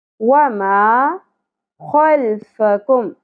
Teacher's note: खौ पुर होगा खराश के साथ , फा की ज़बर को ज़्यादा नहीं खींचेंगे, खल्फकुम काफ बारीक